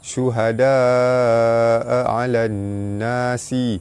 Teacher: huruf mat bertemu dengan hamzah dalam satu kalimah, hukum dia mat wajib mutasil dibaca panjang 5 harakat. Alif lam bertemu nun, alif lam syamsiah terus masuk ke nun, baris atas bertemu alif mat asli panjang 2 harakat.